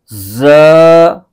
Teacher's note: इस हर्फ को पढ़ते हुए सीटी की तरह की तेज आवाज निकलती है